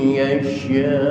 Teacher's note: ketika berhenti maka disukunkan yasha, tapi panjangnya tetap harus 6 harakat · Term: mad wajib muttasil